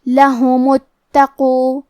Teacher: کلمت لہم میں ہا پہ اور میم پہ دونوں پہ پیش ہے تو ہمیں یہ دونوں پیش کو ظاہر کرنا ہے. کلمت اتقو کی شروعات میں الف ہے کیونکہ یہ حمزۃ وصل ہے تو ہم حمزہ کو ظاہر نہیں کریں گے. کلمت لہم کے بعد حرف التا کو پڑھیں گے. · کلمت تقو میں تا پہ تشدید ہے لہذا ہمیں یہ حرف کو دو حرف کے برابر پڑھنا ہے.